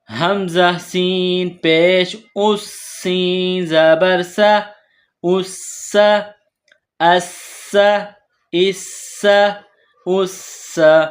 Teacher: سین کو باریک پڑھیں گے، سین میں سیٹی کی آواز پیدا کریں گے۔